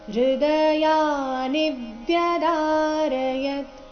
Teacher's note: ನಿ ರಸ್ವ ಬಂದು ಅದರ ಮೇಲೆ ಆಘಾತ ಬರಬೇಕು